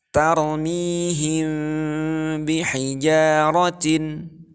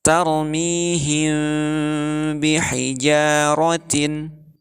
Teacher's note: Maka bunyi huruf mimnya akan menjadi samar antara bunyi huruf mim dan ba. Itu karena huruf mim dan huruf ba memiliki makhraj yang sama, yaitu di 2 bibir. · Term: ikhfa syafawi